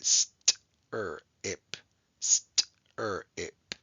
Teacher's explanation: three consonants that are very close together but we can hear each sound separately st er ip so that is called a three-letter blend okay